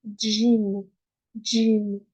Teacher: en arabe, on dit bien gym. C'est comme si avant, il y avait un D et puis un J.